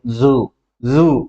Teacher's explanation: ఈ జూలో జెడ్ పలుకుతూ ఉన్నప్పుడు మనకి ఏమైందంటే ఇక్కడ వైబ్రేట్ ఒకలాంటి బజ్జింగ్ వైబ్రేషన్ కలుగుతూ ఉన్నట్టు అనిపిస్తుంది కాబట్టి దాన్ని మనం వాయిస్ సౌండ్ అంటాం.